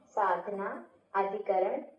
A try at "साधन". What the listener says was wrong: साधन है वो, साधना दीदी नहीं है।